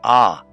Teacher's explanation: The Ayin is silent, so you only have the ah sound of the vowel